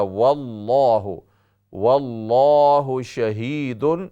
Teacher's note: لفظ اللہ کا لام موٹا کر کے ہم پڑھیں گے، اس سے پہلے واو کے اوپر زبر ہے